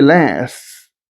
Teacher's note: Certain consonants are weakened, which is interesting about this, for example, last would be /las’/. So this /t/ consonant would be absent.